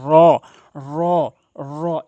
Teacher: র হরফটি মুখ গোলাকার করে জিহ্বার আগাটি উল্টিয়ে উপরের তালুর সঙ্গে র র এভাবে উচ্চারণ করবেন।